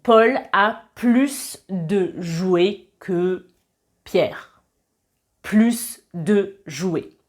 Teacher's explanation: si le plus accompagne un nom, on va prononcer [plus] avec un s